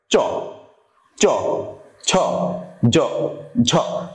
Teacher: শক্ত তালুটা সামনে, নরম তালুটা পিছনে। তো শক্ত তালু দেখো, দাঁতের উপরের অংশ অনেকটা মাছের ফুলকার মতো যে জায়গাটা আছে, ওইখান থেকে চাপ লেগে নিচে আসছে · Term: তালব্য